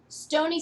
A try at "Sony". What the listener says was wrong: Sony? Sound like you said Stony.